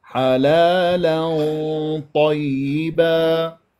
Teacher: تنوين وفتح جاء بعدها طاء، فهذه تفخيم. مفخمة مرتبة ثانية بمرتبة الطاء، طاء مفخمة مرتبة ثانية مفتوحة